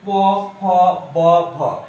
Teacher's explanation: এগুলো উচ্চারণের সময় দেখো তোমার এক ঠোঁটের সাথে এক ঠোঁট লাগতেছে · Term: ওষ্ঠ